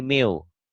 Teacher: bunyi N-nya masuk ke W